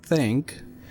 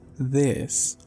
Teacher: with the dental fricative we have this sound there as in think